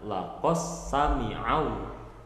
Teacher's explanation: Jadi dalnya udah nggak ada karena diidghamkan ke huruf sin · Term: idgham mutaqaribain